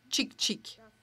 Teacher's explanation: on parlait plus du bruit du baiser, le clic bilabial